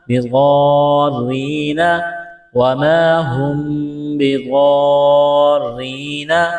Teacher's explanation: یہ لمبی مد ہے، 4 الف کے برابر کھینچنا ہے، را کو باریک کرنا ہے